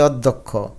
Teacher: অ কে একটু ওর মত উচ্চারণ করি